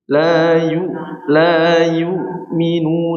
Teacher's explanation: Hamzah enggak tekan, hamzah tidak tekan, cukup dimatikan aja.